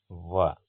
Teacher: ಹಲ್ಲು ಮತ್ತು ತುಟಿಗಳ ನೆರವಿನಿಂದ ಉಚ್ಚರಿಸಲ್ಪಡದ ವರ್ಣಗಳನ್ನ ನಾವು ದಂತ್ಯೋಷ್ಟ್ಯ ಅಂತ ಕರೀತೀವಿ ಉದಾಹರಣೆಗೆ ಒಂದೇ ಅಕ್ಷರ ವ ಇದು ದಂತ ಮತ್ತೆ ತುಟಿಗಳ ನೆರವಿನಿಂದ ಹುಟ್ಟ ಅರ್ತಕಂತ · ಇದು ದಂತ ಮತ್ತೆ ತುಟಿಗಳ ನೆರವಿನಿಂದ ಹುಟ್ಟತಕ್ಕಂಥ ವರ್ಣ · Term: ದಂತ್ಯೋಷ್ಠ್ಯ